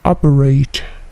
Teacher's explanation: T-nya berbunyi memantul, operate